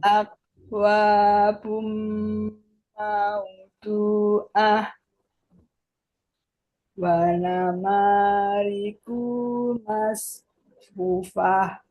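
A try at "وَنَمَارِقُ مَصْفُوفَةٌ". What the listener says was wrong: Wa nama riku, kunya pendek.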